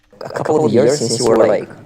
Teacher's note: If you want to speak clearly, if I'm speaking very clearly and intentionally enunciating things, I might say that V sound intentionally for clarity. But if it's just an everyday normal sentence and I'm not intentionally emphasizing that word for clarity, I think I would tend to drop the V